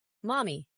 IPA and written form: ˈmɒmi (mommy)